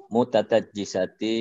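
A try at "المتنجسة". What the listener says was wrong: Nah, tak, Pak, mutanaj pakai non.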